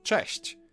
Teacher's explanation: Polish ch is a bit harsher than its English counterpart, but there's also a comparable softer sound